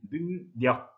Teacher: 능력 이렇게 뒤에 리을이 니은으로 바뀝니다. 이응 때문에 그런 거죠.